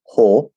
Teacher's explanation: could do a full l it's okay it's not wrong but we're likely to do that that dark l half l sound